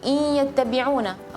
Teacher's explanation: ya harus ada dengung yang lewat dari rongga hidung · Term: gunnah